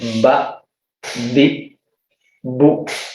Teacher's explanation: tidak tersembunyi karena hembusan nafasnya tertahan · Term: jahr